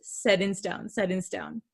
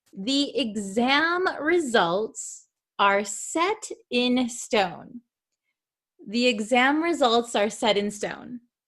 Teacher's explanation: we're talking really fast set in stone said in stone okay you can't really hear that t sound here